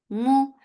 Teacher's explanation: Bim, idgham with gunna, so keep the sound in your nose. Mu, for dhamma circle lips, the sound is short.